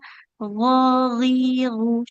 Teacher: ada huruf gin g tebal mengalir suaranya